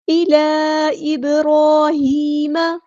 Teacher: دوبارہ ہمیں مد دکھ رہی ہے ڈسکنیکٹڈ مد، مد منفصل، 2 یا 4 کاؤنٹ ہم اس کو لمبا کریں گے